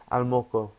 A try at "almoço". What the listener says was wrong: No, but it's almoço because the C has that little thing on the bottom. Can you see? Yeah, from K to S, almoço. almoço, almoço.